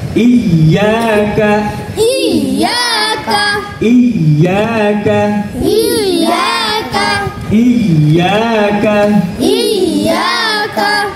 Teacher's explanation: জিহ্বার মধ্যখান তার বরাবর তালুর সঙ্গে লাগায় জিহ্বার মধ্যখান তারপর উপরে তালুর সঙ্গে লাগাইয়া। কয়টি হরফ উচ্চারণ হয়